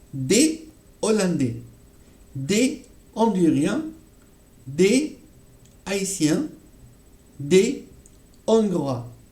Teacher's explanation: Le H, dans tous les cas, en français, ne se prononce pas · on ne va pas faire de liaison, d'accord, avec les mots, d'accord, hollandais, donc les gens de l'Hollande, honduriens, les gens de Honduras, haïtiens ou hongrois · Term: H aspiré